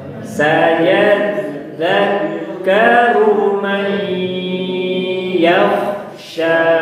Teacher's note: Mai setengah di hidung, setengah di mulut.